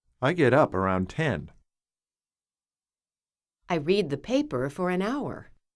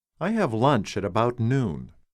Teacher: the prepositions in these sentences around for and at are not stressed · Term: unstressed words